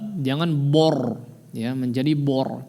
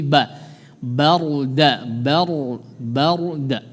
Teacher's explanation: huruf ra-nya ditebalkan di sini, tapi jangan sampai mempengaruhi tipisnya huruf ba.